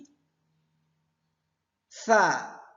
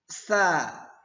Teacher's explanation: Penyebutan huruf sa dengan cara menempelkan lidah kita, ujung lidah kita ke bagian gigi atas bagian dalam. Ke gigi atas bagian dalam.